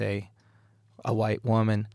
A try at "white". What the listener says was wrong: There's An H